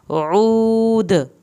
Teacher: عین کو حلق سے پڑھ کے واو ساکن کو کھینچنا ہے اور آخر میں دال پہ کلکلا کیا جائے گا